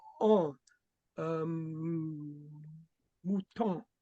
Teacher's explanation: It's more of an, it's aw, and then add an nasalization to it.